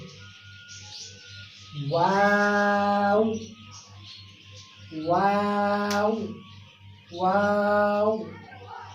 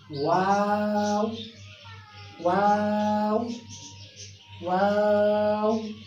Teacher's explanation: वाव अदा होता है दोनों होठों के गोल होने से। दोनों होठ जब गोल होंगे तो वहाँ से अदा होगा वाव वाव वाव।